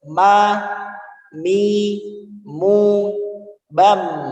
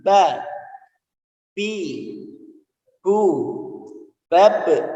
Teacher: ketika ba dan mim bibir membungkam. Jadi keadaan membungkam.